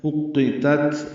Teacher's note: دونوں باریک ہیں، تا کو تا سے ملانا ہے، اُقِّتَت اور تا ساکن ہے، اس پہ ہمس ہوگا